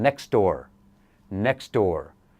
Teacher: the first sound of the second word will eat the final sound of the first word